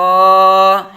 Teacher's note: اس میں بھی با باریک، لام باریک اور غین کو پر پڑھا جائے گا، حروف مستعلیہ میں سے ہے۔